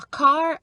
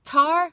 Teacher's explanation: front of your tongue has to stay still and the back of your tongue has to lift up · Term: k and g sounds